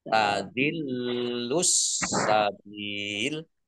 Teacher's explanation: Bak kasroh ya sukun mat tobi'i, tetapi karena bertemu dengan huruf terakhir yang dibaca sukun karena wakof, maka menjadi mat arid lis sukun. Dibaca panjang, boleh 6, boleh 4, boleh 2 harokat.